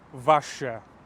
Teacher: the O's sort of get pushed together and the B vanishes